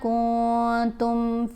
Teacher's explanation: نون واضح نہیں پڑھا جائے گا، ناک میں چھپا کر پڑھیں گے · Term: اخفاء